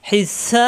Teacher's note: তিন আলিফ টেনে বাই কলকলা হবে